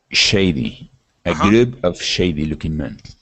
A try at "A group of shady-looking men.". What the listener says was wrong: Exactly.